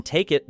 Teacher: though it belongs partly to the next word. In "take it," the K moves into it, creating a smooth transition